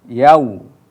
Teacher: waw ini adalah huruf yang dibaca dengan monyong, nah, itu maka harus yau. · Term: huruf len